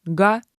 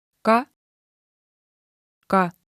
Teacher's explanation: Iga silbi ütleb ta kaks korda. Kui kostab g, paneme plussmärgi, sest on vibratsioon. Kui k häält ei ole, siis paneme miinusmärgi.